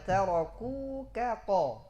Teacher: Selanjutnya tahwiluha ila qafin, ya. Mengubahnya ke dalam qaf inda mujawaratil qaf, ketika dia di samping huruf qaf.